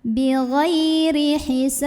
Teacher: ba-nya ini kan disukunkan, hukumnya qalqalah kubro ya, karena huruf qalqalahnya matinya karena kita berhenti. Jadi dipantulkan, pantulannya besar.